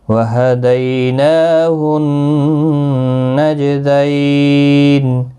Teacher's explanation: دیالین ہے، نون کو ایک الف کی مقدار کے برابر کھینچ کر پڑھیں گے، اور نون مشدد پر غنہ ہوگا، جیم ساکن پر قلقلہ ہوگا. دیالین ہے، وقف کی صورت میں نون ساکن پڑھا جائے گا، 3 سے 5 الف کی مقدار کے برابر کھینچ کر وقف کریں گے.